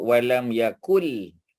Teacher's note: Tetapi sukun tu tak ditulis kerana dia bersambung dengan lam. Ya, bila dia bersambung dengan lam, nun tu tidak disebut, tidak dilafazkan, ditulis tetapi tidak dilafazkan